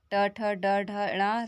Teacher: ये मूर्धा से बोले जाते हैं, इसलिए हम इन्हें मूर्धन्य वर्ण कहते हैं